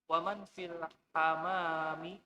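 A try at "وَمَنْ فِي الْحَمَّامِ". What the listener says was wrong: Fil hammami, ini ada tasdidnya ya. Waman fil hammami?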